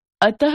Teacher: विसर्ग अह का उच्चारण ह व्यंजन के रूप में किया जाता है